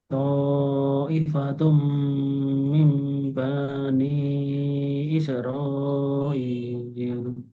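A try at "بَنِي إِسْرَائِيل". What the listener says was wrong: Lagi baknya pendek. Tadi bani. Bani. Masih bani. Banyak masih panjang. Ini pendek. Bani.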